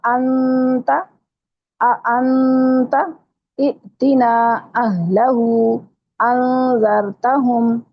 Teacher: حمزہ جھٹکے سے ادا کریں گے جو ساکن حمزہ ہے